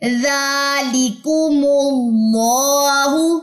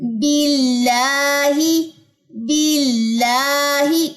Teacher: یہ لام باریک پڑا گیا یعنی کہ آواز منہ سے باہر تھرو ہوگی